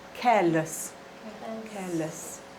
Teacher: all of these words have the stress on the first syllable